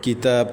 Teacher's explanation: کتاب تا کے اوپر کھڑی زبر ہے، 1.5 الف تک کھینچیں گے